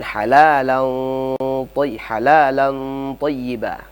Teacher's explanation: Di situ ada ikhfa. Yang panjangnya 2 harakat atau lebih.